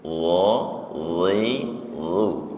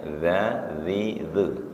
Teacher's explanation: Kalau lo lebih tebal, kalau za enteng